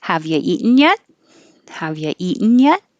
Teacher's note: it's a yes no question so it goes up up up